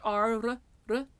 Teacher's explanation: your partially voiced flipped r, r, r, and your unvoiced ts, ts, ts, ts.